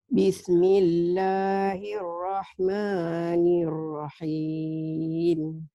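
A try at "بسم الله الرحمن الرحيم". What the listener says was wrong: Jangan lupa nutup mulut. Kedengarannya kayak gini. Bismillahirrahmanirrahim. Hin. Bibirnya mingkemin. Him. Gitu.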